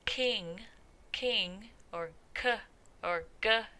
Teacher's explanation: And this is where the tongue is at, or at least near the soft palate or the velum. So if you say the word king, or k, or g, as in go, then you can feel that articulation or that touching of the velum in your tongue. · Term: Velar sounds